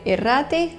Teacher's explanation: Basque doesn't like to have an initial R, so it adds a vowel before it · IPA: [irati]